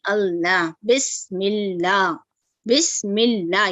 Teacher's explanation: اگر زیر آتا ہے اللہ، لفظ اللہ سے پہلے، تو اسے ہم لائٹ پڑھتے ہیں